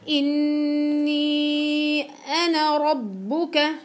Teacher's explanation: إن نون مشددة تعطي على طول غنة طويلة. إذا بدك أربع حركات، بدك بعدين أربع حركات مد.